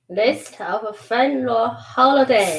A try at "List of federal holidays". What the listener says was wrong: Federal. Fed. Yeah, it's a D. Federal. Not of a. List of federal.